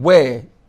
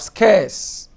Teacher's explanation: You have the air gliding to meet with the schwa to form the air sound, like you have in wear. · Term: central diphthongs